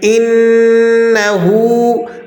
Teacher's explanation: إِنَّهُ كَانَ تَوَّابًا، اب یہاں پر انہو نون مشدد ہے تو آپ نے اس کو سختی کے ساتھ انہو نہیں پڑھنا بلکہ آپ اسے سختی کے ساتھ ادا کریں گے۔ انہو، ہا پر الٹا پیش ہے، اسے ایک الف کے برابر کھینچ لیں گے